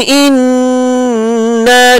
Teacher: Nun tasdid wajibul gunnah dengan dua harakat.